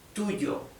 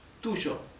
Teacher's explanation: In Argentina or in Uruguay, where I come from, it is tuyo, okay? More like the English SH